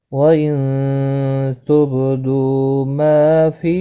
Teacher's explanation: نون ساکن کے بعد حروف اقفا کا تا آیا ہے، اقفا حقیقی ہوگا، غنہ کے ساتھ پڑھیں گے، با ساکن پر قلقلہ ہوگا، دو واو مدہ ہے، ما الف مدہ ہے، دونوں کو ایک ایک الف کی مقدار کے برابر کھینچ کر پڑھیں گے۔